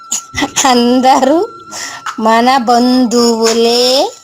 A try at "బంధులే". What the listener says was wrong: బంధువులు కాదు, బంధులే.